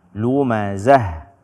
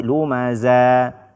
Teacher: bacalah ha tersebut dengan jelas tanpa menggantinya dengan huruf mad atau tanpa menggantinya dengan huruf yang lain.